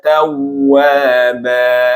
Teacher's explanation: Tawwaba di sini di wawu tasydid, ditekan, bukan ditahan